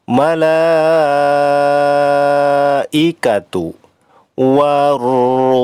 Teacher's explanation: Malaikatu, la-nya ini dibaca panjang, termasuk mad wajib muttasil, lamanya 5 harokat.